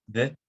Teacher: Les consonnes bilabiales occlusives sonores